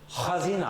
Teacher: Это звук резкий и с храпом. Выдоха на «х» там нет.